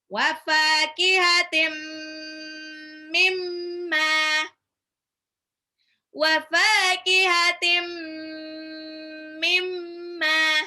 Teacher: tanwin ketemu mim, itu idgham bi gunnah. Lebur tapi tahan 2-3 harokat. Wa fakihatim mimma, mimnya tasdid, gunnah lagi.